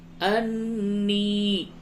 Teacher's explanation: نون مشدد ہے، غنہ ہوگا اور یا کو تھوڑا سا کھینچیے